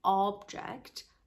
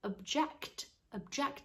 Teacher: If you put the stress on the second syllable, the O becomes a schwa sound, the most common vowel sound in English.